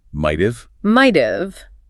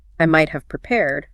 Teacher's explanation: When spoken at a natural pace, we have to employ the economy of breath that native speakers use. The full word have is almost never pronounced. It reduces completely to a mere schwa vowel followed by the v sound. >> So it becomes the uv sound. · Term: reduction of sounds